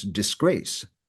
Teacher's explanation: the actual pronunciation is disgrace with the the emphasis on the second syllable